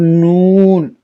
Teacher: نون زبان کے کنار اور نیاب سے ثنایا تک کی دانتوں کے جوڑوں سے ادا ہوتی ہے